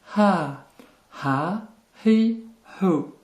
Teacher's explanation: c'est un H très légèrement soufflé